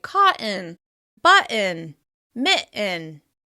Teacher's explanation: When it comes to words with the double t like cotton, button, and mitten, we often substitute a glottal stop instead